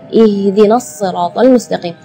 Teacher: Jadi keluarnya tipis karena H itu termasuk huruf di antara 28 huruf hijaiyah yang paling lemah adalah huruf H. Maka kita jangan berlebihan supaya huruf H itu jelas jadi gitu, gitu enggak. · makhraj huruf H itu adalah dari tenggorokan. Jadi keluarnya tipis karena H itu termasuk huruf di antara 28 huruf hijaiyah yang paling lemah adalah huruf H.